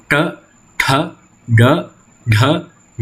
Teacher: The sounds t, th, d, dh, n are termed cerebral or retroflex, and this is produced by the manipulation of the tongue to position itself on the hard palate.